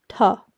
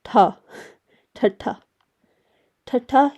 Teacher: you're expelling a lot more air a lot more breath